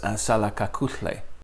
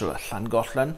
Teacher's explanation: one of my favorite sounds is the lateral fricative, ahla, that you find, for example, in one of the ways of saying goodbye in Xhosa, which is salakakuhle.